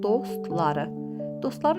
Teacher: Dostları, dostları sözündə o qalındı, a qalındı, ı qalındı. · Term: qalın saitlərdir